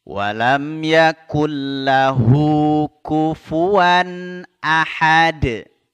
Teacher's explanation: ditahan ya tidak boleh mendengung walam Yakun lahu kufuwan Ahad ya ditutup dengan huruf Dal yang disukunkan diqalqalah ya dipantulkan